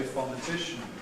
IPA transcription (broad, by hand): ˌfɒnɪˈtɪʃn̩